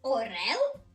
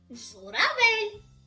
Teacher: Орел Л твердий, журавель ль м'який.